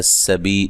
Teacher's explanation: سین کو باریک سیٹی سے، بی یا مدہ ہے